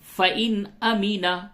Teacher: نون ساکن کے بعد حمزہ ہے، اظہار ہوگا